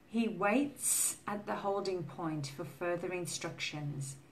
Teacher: Waits is the s sound. No vibration here.